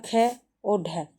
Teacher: महाप्राण ध्वनियां वे होती है जिनके उच्चारण में श्वास अधिक मात्रा में निकलती है और है जैसी ध्वनि सुनाई देती है।